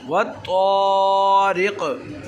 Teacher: रा और क़ाफ़ की आवाज़ को मिलाकर हमने ढीला इसलिए किया क्योंकि क़ाफ़ में कलकला है